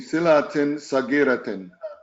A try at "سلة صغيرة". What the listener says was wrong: It's not silatin. It's sillatin. Sillatin.